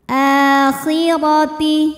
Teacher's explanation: Huruf ra dibunyikan secara tafkhim karena berbaris fathah, maka dibacanya tebal.